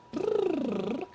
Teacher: First of all, a lip trill is going to increase your breath support because it limits the airflow. When you do a brrr, you've got steady air and notes that change. So it's causing you to regulate the breath.